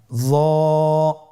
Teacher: জিহ্বার আগা, সামনের উপরের 2 দাঁতের আগার সঙ্গে লাগিয়ে উচ্চারিত।